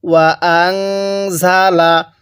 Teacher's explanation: নুনের মধ্যে গুন্নাহ করব, কারণ নুন সাকিনের পরে জাহাটি ইকফার হরফ, আর নুন সাকিনের পরে ইকফার হরফ থাকলে সেখানে গুন্নাহ করতে হয়।